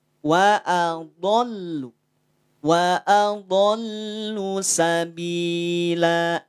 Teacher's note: Lidahnya pinggir lidah nempel ke geraham. Baik yang kiri ataupun yang kanan. Atau dua-duanya bisa. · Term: bunyi tebal